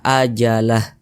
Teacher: kalau kita berwakaf atau berhenti tepat di huruf H maka kita baca ajalah